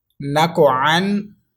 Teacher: قوف حرف کلکلا ہے، اس میں کلکلے کی آواز آنی چاہیے۔